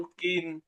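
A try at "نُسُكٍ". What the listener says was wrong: টান হবে না। নুসুকিন,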